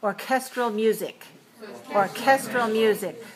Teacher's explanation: we have to have a strong puff of air because we shifted the stress to the second syllable · But when we talk about orchestral music, 3-2, the second syllable is stressed, and we have to put a strong puff of air on the k